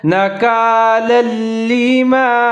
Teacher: فجعلناها نکالا لما، لام کے اوپر تنوین ہے اور اس کے جو آگے لام ہے وہ مشدد ہے، تو دونوں لام کو ساتھ میں ملا کے پڑھیں گے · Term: ادغام تام